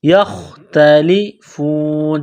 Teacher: نو، کانوا، فیہ یختلفون، یا کو خا کے ساتھ ملانا ہے، خا کو موٹا کرنا ہے، جس طرح انسان گلے سے بلغم نکالتا ہے اسی طرح اس خا کو نکالنا ہے، یختلفون، تا کو باریک کرنا ہے، جب وقف کریں گے تو